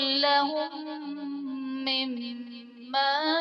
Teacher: لہم مما میں میم ساکن کے بعد دوسری میم ہے تو یہاں پر ادغام شفوی کا قاعدہ ہوگا، یعنی میم ساکن میں ہم غنہ کر کے پڑھیں گے